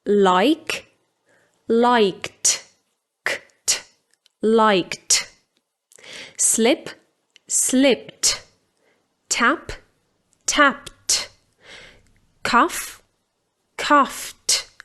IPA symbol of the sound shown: t